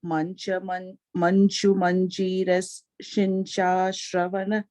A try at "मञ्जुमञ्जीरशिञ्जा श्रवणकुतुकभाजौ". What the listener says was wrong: The shinja is a long manju manjira shinja shravana. Stretch that.